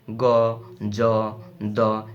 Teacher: গ, জ, দ, এরা কিন্তু ঘোষ, অঘোষ না। এরা কিন্তু ঘোষ ধ্বনি।